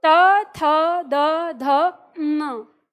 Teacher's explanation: हम दांत से जीभ को छूकर बोलते हैं तो यह न का उच्चारण उत्पन्न करता है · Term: त वर्ग दंत वर्ग